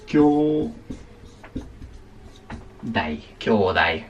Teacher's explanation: no se pronuncia la U